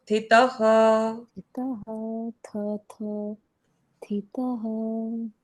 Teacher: लेकिन थ कहने के लिए इसको कहते हैं महाप्राण अक्षर। महाप्राण मतलब ज्यादा ब्रेथ लगती है, ज्यादा एफर्ट लगता है इसको उच्चारित करने में। और यहाँ पर गड़बड़ क्या हुई है कि त के साथ ही थ आ रहा है, इसीलिए हमको ये डिफिकल्ट लगता है लेकिन ये नहीं है है।